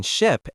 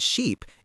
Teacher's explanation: The short I is the relaxed vowel where you let your jaw drop slightly and your lips remain neutral. >> The difference between ship and sheep is the difference between my jaw being relaxed and my lips being wide.